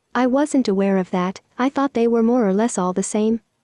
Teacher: our model tried to raise the intonation at the end of the sentence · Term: uptalk